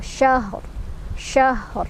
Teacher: Syahr, ro-nya dibaca secara tebal ya, karena kita berhenti di sini. Jadi ro-nya kalau wasol bacanya tipis, barisnya di bawah.